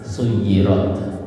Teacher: Di ujung ini ada hams ya. Huruf ta itu hamas ya. Jadi ada desahan nafasnya